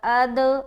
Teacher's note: پھر قلقلہ کر رہے ہیں کیونکہ دال حروف قلقلہ میں سے ہے